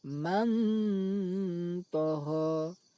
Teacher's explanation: Cara membacanya, suara nun sukun dibaca samar antara izhar dan idgham lalu didengungkan. Man toho. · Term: ikhfa